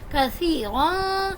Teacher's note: یا حرف مدہ میں سے تھی، میں نے ایک الف کے برابر کھینچ کے، ایک الف یعنی کہ دو حرکات کے برابر میں نے اس کو کھینچ کے پڑھا. را پہ میں نے اگین اخفا کیا.